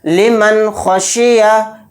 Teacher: نون کی آواز کو جلد پڑھنا ہے ظاہر کر کے بلا غنہ کے